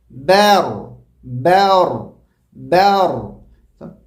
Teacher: با کو باریک پڑھنا ہے، صرف ایک حرکت کے برابر پڑھنا ہے، اور را کو موٹا پڑھنا ہے. را کی وجہ سے با کو موٹا نہیں پڑھنا، بور نہیں، بیر بیر بیر.